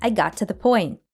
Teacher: the to here reduces to ta